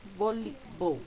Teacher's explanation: La que se pronuncia más fuerte es li. Por tanto, es nuestra sílaba tónica.